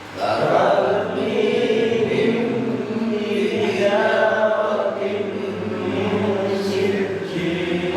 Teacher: Taumihim, himnya ditahan sebab mim mati ketemu ba.